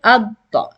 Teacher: So you need to pronounce the first dad with sukoon as a stop on the pronunciation of dad. And the second dad will be pronounced with the haraka mentioned over the shadda or below the shadda.